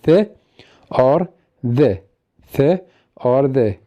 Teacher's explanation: The sounds which are produced by using the tip of tongue and the upper teeth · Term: Dentals